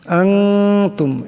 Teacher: নুন সাকিনের পর তা আসছে, তা হলো ইকফার হরফ, তাই এখানে ইকফার একারে পরিমাণ গুণনা হবে।